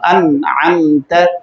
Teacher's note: اب غنہ ختم ہو گیا، اخفاء ختم ہو گیا، اب نون ظاہر ہوا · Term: اظہار